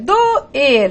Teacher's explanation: doer, sílaba tônica, a última sílaba é uma oxítona